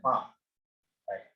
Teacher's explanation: इसको bilabial. Bilabial means both lips come together.